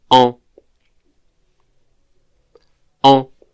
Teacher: this vowel is like e in a word like sœur, but nasalized